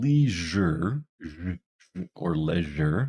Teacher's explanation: it's voice we can feel the vibration